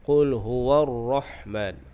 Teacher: ar-Rahman huruf ha keluarnya di tengah kerongkong